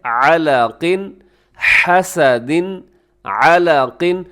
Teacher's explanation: اور تیسرا مخرج جو ابھی ہم نے پڑھا ہے یہ ہے وسط حلق، یعنی حلق کے درمیانی حصہ، یہاں عین اور حا نکلتے ہیں